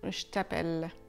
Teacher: Essayez quand même de ne pas aller trop loin dans le son che si vous pouvez et d'essayer de garder un petit peu de ce son abrasif du je.